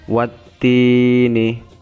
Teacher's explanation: tini itu 2 ketukan, kasroh dengan ya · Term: mat tabi'i